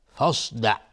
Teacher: صاد از حروف استعلاست، غلیظ تلفظ میشه